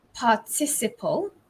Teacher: ending in ing or ed or enn in british english it's the stress falls on the second syllable